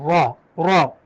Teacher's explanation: زبان کا جو پیچھے والا حصہ ہے اس کو اوپر تالو کی طرف لگائیں تو را نکلے گا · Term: را موٹا